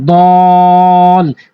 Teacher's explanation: এখানে টান হবে মদ্দে লাজিম কালমি মুসাক্কালের কারণে, এবং অবশ্যই ধরার আগে টানবেন।